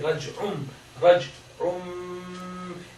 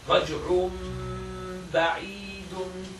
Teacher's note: Iqlab is read with ghunna. With ghunna means that emphasis coming from the nose.